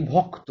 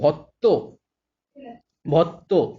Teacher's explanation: সংযুক্ত ব্যঞ্জন বা যুক্ত ব্যঞ্জনের যে বিষম ধ্বনি, সেগুলো সমধ্বনিতে পরিণত হচ্ছে